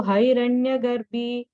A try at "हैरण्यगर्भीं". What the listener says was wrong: on the first line, Hiranya Garbhim, there's a im, okay, there. I don't know if you said that. So Garbhim. If you don't have, just put an im there. So Garbhim, im.